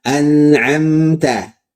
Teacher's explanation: an mengalir sedikit. Am mengalir sedikit ya. Ada sifat bainiahnya, ada gunahnya. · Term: ghunah naqisah